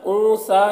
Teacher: نون میں اخفا ہو رہا ہے، اسے بھی نون کی آواز کو ناک میں چھپا کر پڑھیں گے